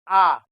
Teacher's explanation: जब आप आ का उच्चारण करेंगे तो आपकी जीभ नीचे वाले दांत के नीचे ही रहेगी और मुख द्वार पूरी तरह जाएगा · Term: विवृत स्वर